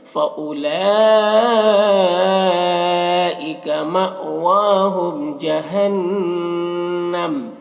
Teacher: ہم کے میم میں اظہار شفوی ہو رہا۔ جہنم نون مشدد غنہ ہوگا